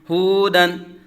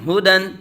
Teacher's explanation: اب ہو کو لمبا نہیں کریں گے کیونکہ یہ حرکت ہے، اور حرکات کو بغیر کھینچے بغیر جھٹکا دیے پڑھیں گے، تو ہودن نہیں بلکہ ہدن، طوبا، قرآن۔